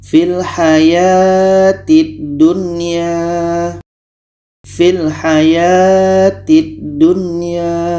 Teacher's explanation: Nun jelas, ya jelas. Dan di sini tidak boleh dengung. Oke? Tidak boleh dengung. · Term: izhar wajib